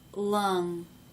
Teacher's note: the tongue is Raising in the back and not in the front